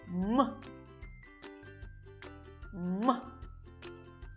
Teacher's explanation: зву к м вимовляється за допомогою голосу і шуму коли ми вимовляємо губи міцно стулені а потім різко розкриваються м · звуком м зву к м вимовляється за допомогою голосу і шуму коли ми вимовляємо губи міцно стулені а потім різко розкриваються